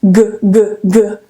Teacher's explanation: G is voiced because I can feel vibration.